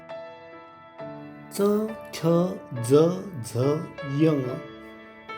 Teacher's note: च, छ, ज, झ, य या अक्षरांचा उच्चार जिभेने टाळूला स्पर्श करून होतो